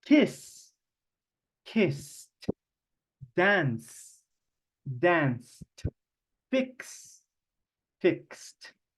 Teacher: Todos estos verbos regulares que esa consonante al final no hace vibración de las cuerdas vocales, en ese caso la ed se pronuncia como una T.